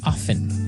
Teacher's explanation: Now with pronunciation, some people like to pronounce often, right? They kind of leave out the strong t sound while other people say often.